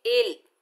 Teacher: حمزہ کے نیچے زیر، آگے لام مشدد ہے، حمزہ کو لام سے ملائیں گے